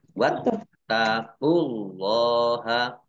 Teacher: Allahnya dibaca tebal karena harokat di depannya dhammah.